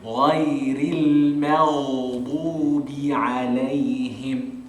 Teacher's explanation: So it's lai. Look, I start off with thick, gha, and then the ya is going to be thin, so I'm going to open my mouth.